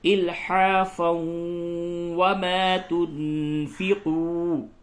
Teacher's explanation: تنوین کے بعد واو حروف یرملون میں سے ہے، تو یہاں پہ ادغام مع الغنہ ہوگا